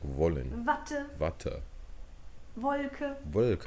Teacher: The W, though, is actually the English V sound, like in wollen, Wollen.